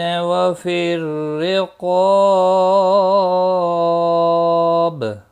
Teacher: وفی الرقاب را زیر کی وجہ سے باریک پڑھا جائے گا، قاف مستعلیہ ہے، پر پڑھا جائے گا، اس کے ساتھ میں الف بھی آیا ہے، یہ بھی پر پڑھا جائے گا، اور الف مدہ بھی ہے، 1 الف کے برابر کھینچ کر بھی پڑھیں گے، اور وقف کی صورت میں با ساکن پڑھا جائے گا، اس پر قلقلہ بھی ہوگا۔